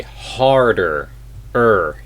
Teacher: we do pronounce the r sound in American English